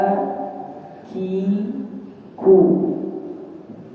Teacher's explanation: pangkal lidah yang bertemu dengan langit-langit keras adalah tempat keluarnya huruf kaf